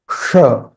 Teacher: And this sh is a retroflex because it has a dot below. Sh, not sh.